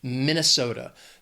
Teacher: 4 syllables, stress is on that 3rd syllable, that so. That 2nd syllable is just the schwa, Minnesota.